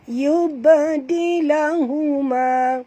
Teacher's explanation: ba ni bila dia mati qalqalah surah. Jadi kita bunyikan lantunan.